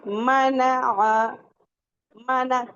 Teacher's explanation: मीम बोलना है तो कैसे मना मना आपके जो लिप्स के आउटर पार्ट हैं वहां पे मिल रहे हैं